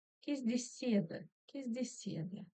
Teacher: ударение переходит вот сюда, на звук, на букву Е в слоге Се.